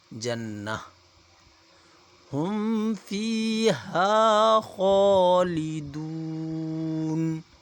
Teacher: اولئک اصحاب الجنہ نون مشدد ہے، غنہ کیا جائے گا، تو آگے جو آپ کو یہ گول تا نظر آ رہا ہے اس سے یہاں پہ ہا کی آواز نکالی جائے گی